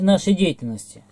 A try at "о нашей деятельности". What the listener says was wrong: Заглатываешь окончание сильно.